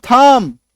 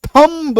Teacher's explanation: बी वहां पे है ही नहीं, साइलेंट हो जाएगा बी।